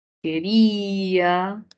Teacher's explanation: la mayor fuerza de voz está en ri